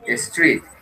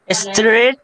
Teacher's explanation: Esto es doble E, pronuncia como una I. Larga. Street. Yeah.